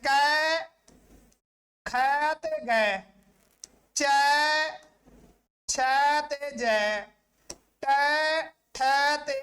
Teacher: ਆਉਂਦੀ ਹਵਾ ਨੂੰ ਇੱਕਦਮ ਰੋਕ ਪੈਂਦੀ ਹੈ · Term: ਢਕਵੇ ਵਿਅੰਜਨ